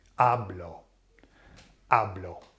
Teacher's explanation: the emphasis falls on the second last vowel, which is the A.